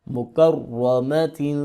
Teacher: اور را کو پر کر کے پڑھیں گے اور سختی کے ساتھ پڑھیں گے کیونکہ اس کے اوپر زبر بھی ہے اور شاد بھی ہے.